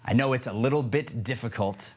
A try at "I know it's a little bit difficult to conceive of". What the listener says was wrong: to conceive of. Keep talking. Yeah, so you see, you can't pause. I know it's a little bit difficult to conceive of, after all, someone who always lies. You have to get through the whole line with still hitting the consonants.